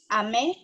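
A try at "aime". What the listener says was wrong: You cannot read that word as ame because it is not a. You've just said a produces the sound A, right? So it can't be a. So it's supposed to be ame.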